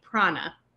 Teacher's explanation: a retroflex n so the tongue should be behind the teeth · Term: retroflex na